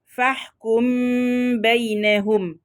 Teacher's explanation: طبعا هنا عندنا حكم الإخفاء الشفوي لازم بنعمل إطباق للشفتين إطباقا كاملا، بنطبق الشفتين إطباقا كاملا، وبخفي الميم مع الإتيان بالغنة